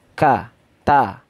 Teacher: Syiddah atau tertahannya suara itu lebih mendominasi. Makanya huruf kaf dan ta itu ketika dia berharokat tidak hampir tidak terlihat bunyi hamasnya